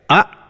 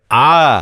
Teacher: ಉದಾಹರಣೆಗೆ ಅ ಎನ್ನುವ ಅಕ್ಷರಕ್ಕೆ ಕನಿಷ್ಠ ಪ್ರಮಾಣದ ಅಳತೆ, ಒಂದು ವೇಳೆ ನಾವು 1 ಸೆಕೆಂಡನ್ನು ತೆಗೆದುಕೊಂಡ್ರೆ ಆ ಅನ್ನತಕ್ಕಂಥ ಸ್ವರಕ್ಕೆ 2 ಸೆಕೆಂಡ್ಗಳನ್ನು ತೆಗೆದುಕೊಳ್ತೀವಿ